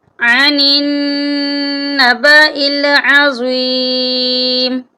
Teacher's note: سورۃ النبأ آیت نمبر 2 میں ہے عن النبأ العظیم، یہاں پر بھی دیکھیں نون مشدد ہے، نون پر ہم غنہ کریں گے، یعنی ناک میں آواز لے جائیں گے